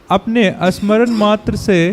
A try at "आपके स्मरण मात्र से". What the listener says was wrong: अपने नहीं, अपने नहीं प्रभु जी का। देखिए इसीलिए चर्चा करना बड़ा जरूरी है नहीं, अपने आपके की जगह अपने हो गया।